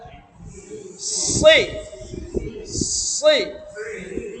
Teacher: জিহ্বার আগাটা লাগবে দাঁতের সাথে, নিচের দাঁতের আগার সাথে , অতএব দাঁত একসাথে লেগে যাবে, উপরের দাঁত নিচের দাঁত ভিতর